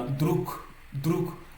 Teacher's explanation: Vous voyez que le mot druk se termine par un G. Mais dans la prononciation, il se lit K. Tout simplement parce que le G s'est assourdi en K. Et le K est une consonne sourde qui est la paire de consonnes de la consonne sonore G.